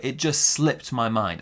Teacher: we put those big stresses on the it sound and slipped